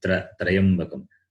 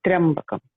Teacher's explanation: So there is no vowel A in between. Therefore, we cannot say Trayambakam.